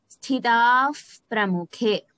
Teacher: In the last line, Tevasthitaf Pramukhe. Here, visargam is followed by pakaraha. So, there will be an if sound.